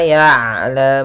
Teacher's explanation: Kemudian ain, sifat ain, sifat bainiyah, yaitu diantara bacaan syiddah dan sifat syiddah dan sifat rokhawah. Kalau syiddah mengalirnya tertahannya suara, sedangkan rokhawah mengalirnya suara kita. Ain diantara keduanya.